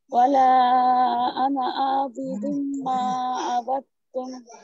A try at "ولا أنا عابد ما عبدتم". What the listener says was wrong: আনা, এখানে আইন আরেকটু প্রেসার দিতে হবে, আর মিমের মধ্যে গুন্নাটা আরেকটু বেশি করতে হবে।